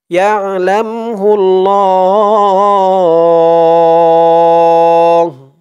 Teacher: থামলে এই হার উপরে পেশটা সাকিন হয়ে যাবে ল 3 আলিফ টান হবে